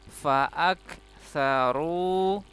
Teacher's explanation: kafnya sukun hamas. Ada sedikit udara yang keluar. Fa'ak saru, ru-nya panjang.